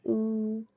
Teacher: Now, when I'm making an ooh sound, my lips are closed and rounded like when whistling. Ooh. My jaw is high and closed. · My jaw is high and closed. My tongue is highest back part of the tongue and is pushed up, and we can see it here in the quadrant that it is high and back and up.